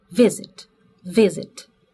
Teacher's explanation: pronúncia Visit Visit Qual é a tônica o vi ó lá a segunda parte não é tônica